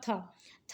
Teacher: हमारे पास में स्पर्शी भी है, घोष भी है, महाप्राण भी है, दंती भी है और व्यंजन ध्वनि है। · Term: दंत व्यंजन